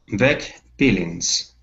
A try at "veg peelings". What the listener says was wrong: Okay, very good.